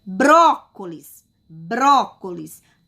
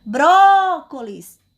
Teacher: a sílaba mais forte, mais intensa é a sílaba bró · Bró, porque eu falo com mais força, com mais intensidade. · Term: sílaba tônica